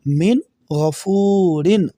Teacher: دیکھیں نون ساکن کے بعد جزم والی نون کے بعد غین آ گیا، غین حروف ہلکی ہے تو یہاں پر ہم غنہ نہیں کریں گے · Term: اظہار